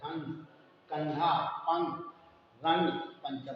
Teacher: इनका उच्चारण करते समय हवा नाक से बाहर निकलती है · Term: अनुस्वार